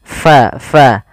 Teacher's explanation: Pada lafal fa'azallahuma syaitanu, pada lafal fa alirkan nafas kita karena fa sifatnya sifat hamas.